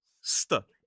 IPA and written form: stə (cester)